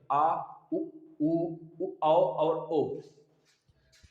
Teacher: अगर जिह्वा के पीछे से बोला जाए, यहां से कंठ की तरफ से, तो पश्च स्वर के अंतर्गत आ जाता है।